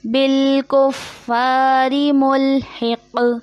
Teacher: یہ قوف موٹا ہے اور قوف حرف قلقلہ میں سے بھی ہے، مطلب آواز پلٹ کے واپس آئے گی، کیونکہ یہ آخر میں آ رہا ہے، ہمارے یہاں پہ ہم ختم کر رہے ہیں تو اس کی آواز پلٹ کے واپس آئے گی۔